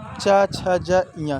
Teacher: तो गाइज आपका आंसर होगा तालु। तो गाइज च वर्ग के जितने वर्ण हैं, अक्षर हैं, सबका जो उच्चारण स्थान है वो है तालु है।